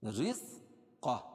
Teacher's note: را باریک ہوگی کیونکہ را کے نیچے زیر ہے، قاف کو موٹا پڑھیں گے